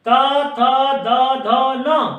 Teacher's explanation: देखिए लृ से लृ, तू से त, थ, द, ध, न, क्योंकि तू से तवर्ग, और तवर्ग में 5 वर्ण त, थ, द, ध, न और फिर ल और दंत स, इनका उच्चारण स्थान दांत से होने के कारण इनको हम दंता भी कहते हैं और दंत्य भी कहते हैं